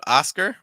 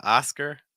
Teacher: A sound at the start. It's not O. It's more A. Very open.